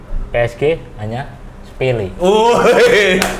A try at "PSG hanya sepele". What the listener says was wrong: Nadanya kurang nyerang, Mas.